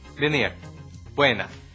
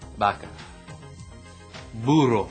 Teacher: In Spanish, B and V are both pronounced like a B, kind of like we pronounce the B in the English word boy, but it's a softer, more airy sound.